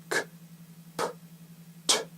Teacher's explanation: They're unvoiced because your vocal cords don't vibrate when you make the sound. In English, most unvoiced stop consonants have a puff of air, that is to say, they're aspirated.